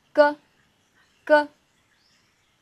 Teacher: Ritter sounds are made at the back of your mouth, which is the back of your tongue, moves up to touch your soft pallet